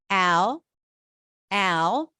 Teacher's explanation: this is a dark l so it's a little heavier I kind of tense the back of the tongue for it